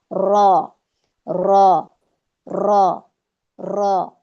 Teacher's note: یہ اوپر دانتوں کے مسوڑوں میں، یا آپ اس کو تالو کہہ سکتے ہیں، سخت تالو، وہاں پر یہ لگے گی زبان کی پشت، जबान की पुश्त, और ये पुश्त कौन सी वाली होगी, रासा लिसान के बिल्कुल ये वाली, इसके करीब करीब मिली हुई, ये लगेगी यहाँ पे, यहाँ से हमारा रॉ अदा होता है।